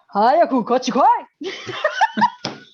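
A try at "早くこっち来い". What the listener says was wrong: Now it sounds like a Kurosawa film.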